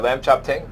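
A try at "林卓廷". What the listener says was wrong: Lam Chuk Ting. Not chopping. Not lamb chop.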